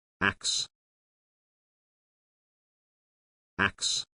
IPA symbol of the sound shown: æks